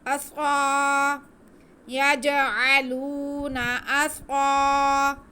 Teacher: स्वाद को वैसे भी हम पुर पढ़ेंगे, ये हरूफ मुस्तालिया में से है। सीटी की आवाज़ के साथ मोटा करके इसे हम पढ़ेंगे। · याज आलूना, याज आलूना, याज, याज आलूना अस्साबिअहुम, हमज़ा पे ज़बर, आगे स्वाद पे भी ज़बर है, लेकिन स्वाद के साथ अलिफ है तो ये अलिफ मद्दा हो गया। स्वाद की आवाज़ को हम खींच के पढ़ेंगे।